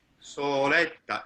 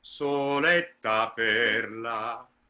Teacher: Soletta, longer O, longer vowel before, just a little bit longer.